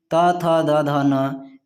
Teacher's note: त वर्ग के जितने वर्ण हैं त थ द ध न, इनका उच्चारण स्थान दंत है।